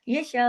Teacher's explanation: हमजा की हमने पेश को रोक दिया, लेकिन हमजा तक हमने पढ़ा